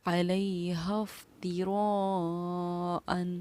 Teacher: اس کے علاوہ یہاں پر حروف مدہ بھی آیا تھا. حروف مدہ کے بعد حمزہ اسی کلمے میں ہے، یعنی جس الفاظ میں حروف مدہ ہے اسی میں ہماری حمزہ ہے، تو اس کو ہم 4 الف کی مقدار کے برابر ہم نے کھینچا